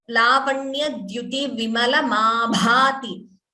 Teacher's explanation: Bha is Mahaprana. So that you have to stress more.